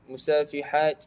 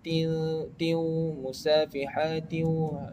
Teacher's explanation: tanwin bertemu dengan waw, kita perlu masukkan huruf waw itu, tanwin itu ke dalam huruf waw. Dan di situ hukumnya adalah idgham ma'al gunnah.